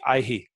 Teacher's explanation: this visarg, H with a dot under it, it makes a slight echo of the previous swara. Or if it comes anywhere other than at the end of the line, a short glottal stop.